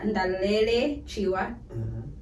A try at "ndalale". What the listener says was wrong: Ndalale. Yes, ndalale, not ndalele.